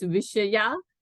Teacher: the visarga was dropped because you had a preceding long a